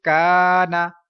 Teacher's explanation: الف سے پہلے باریک حرف ہے، الف باریک پڑھا جائے گا اور الف لمبا کیا جائے گا 1 سیکنڈ، بیکوز الف مدہ بھی ہے، کیونکہ ادھر دیکھیں زبر الف سے پہلے۔